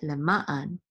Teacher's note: the trope or accent is on the second syllable over MA so this is naman that's how you pronounce it